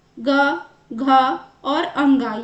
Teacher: क वर्ग का जो भी है व्यंजन उसका उच्चारण स्थान क्या होगा? कंठ यानी कि गला।